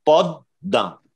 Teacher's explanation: অর্থাৎ দয়ের দুবার উচ্চারণ হচ্ছে। দেখেন পদ্মা, দ্বিতীয় যে দয়ের উচ্চারণ সেই দয়ের উচ্চারণ সামান্য নাসিক্য ধ্বনি প্রভাবিত হবে। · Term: দ্বিত্ব